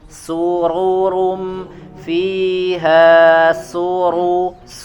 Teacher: Su-nya tipis dulu, ro-nya baru tebal.